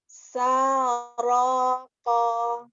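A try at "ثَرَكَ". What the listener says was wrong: Sa, buka lagi sanya. Ya, sebenarnya kalau untuk huruf-huruf yang tebal sudah tidak monyong bibirnya ya. Sudah, cuma kurang terbuka. Jadi kan ukurannya tuh kira-kira ya 2 jari gini ya. Nah ya, patokannya kita buka ya. A, ya. A, ba, ta. Jadi bukan a, ba, ta.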